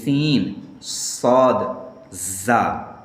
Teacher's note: वो देखते हैं यानी जा की जो आवाज होती है जा की जो आवाज होती है वो बुलंद होती है और स्वाद की जो आवाज होती है वो पुर होती है मोटी होती है और सीन की जो आवाज होती है वो बारीक होती है और सिटी की आवाज तीनों हुरूफ में होती है